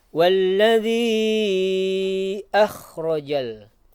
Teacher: kha yang tenggorokan bagian atas